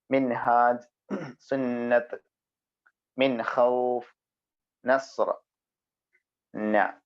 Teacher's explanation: നാവിന്റെ അറ്റവും മേലെ മുൻപല്ലിന്റെ മോണയും. മുൻപല്ലിന്റെ മോണയിലേക്ക്, ആ പൊത്തിലേക്ക് നമ്മുടെ നാവിന്റെ അറ്റമങ്ങ് ചേർത്ത് വെച്ചാല് ഞാ വരും.